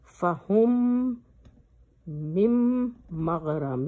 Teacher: میم کو غنہ کرنا ہے، ناک میں لے جانا ہے